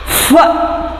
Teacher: ಫ ಇಲ್ಲಿ ಸ್ವಲ್ಪ ಹಿಸ್ಸಿಂಗ್ ಸೌಂಡ್ ಬರ್ತಾ ಇದೆ